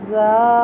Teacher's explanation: زال پڑی زبر الف زا، حرف مدہ کے رول سے ایک الف کے برابر لمبا ہوگا